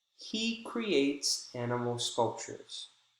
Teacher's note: he is clearly pronounced as it's in the beginning of the sentence